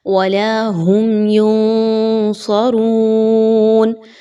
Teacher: سب سے پہلے میم ساکن کے بعد یا کا حرف آ رہا ہے، اور میم ساکن کے بعد یا آ گئی تو اظہار شفوی، یعنی آپ نے میم ساکن کے قواعدوں کو ذہن میں لانا ہے، اور ان قواعد میں سے آپ نے اظہار شفوی کو فالو کرنا ہے، یعنی میم پر کسی طرح کا غنہ نہیں کرنا، کلیئر کر کے میم کی آواز کو پڑھنا ہے